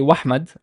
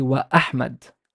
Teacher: I emphasize the glottal sound of the glottal stop sound